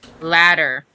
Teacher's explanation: I didn't roll my R though. You rolled the D in the same way that you roll the R. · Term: roll R